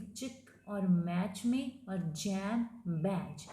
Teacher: Air is blocked with tongue just beyond the एलोवेलर रिज, टंग को जब एलोवेलर रिज के contact में लेके जाके हम ब्लॉक करते हैं और फिर उसको रिलीज करते हैं, इसको ये कहलाती है फ्रिकेटिव।